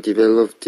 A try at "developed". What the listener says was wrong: developed 이렇게 발음하죠. 우리가 developed ed가 붙어있을 때 ed가 아니고 t로 발음해서 developed 이렇게 발음해야 되잖아요. 근데 이 학생은 ed로 발음했습니다. 그래서 developed 제가 고쳐드리고